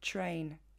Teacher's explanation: le TR de train est finalement très proche du son ch